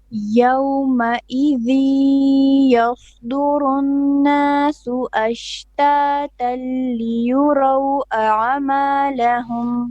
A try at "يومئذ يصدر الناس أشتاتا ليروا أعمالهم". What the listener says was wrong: Your ayn is a bit of an issue. You're saying a'ama, a'ama. No, you're putting a fatha on the ayn. It's a'malahum, a'malahum.